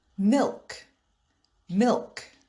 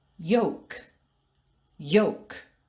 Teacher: in the word milk the l is pronounced but in the word yolk the l is silent